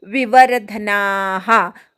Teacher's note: वर्धन मधल्या व वर आघात घ्यायचा